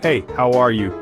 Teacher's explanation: Stress is on how and you.